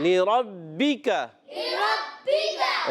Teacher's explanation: را کو پر رکھنا ہے اور با مشدد ہے، تھوڑا سا رک کر ادا کریں گے